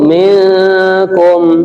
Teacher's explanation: Kemudian yang mendengung minkum, nah ini ikhfa.